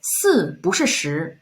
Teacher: But here is the pinyin rule for 不. When there's a fourth tone character behind 不, then you change the tone of 不 from fourth tone to second tone.